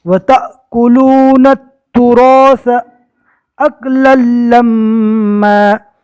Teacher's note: الف کی شکل میں حمزہ آ گیا لہٰذا یہاں پر جھٹکا دے کر پڑھیں گے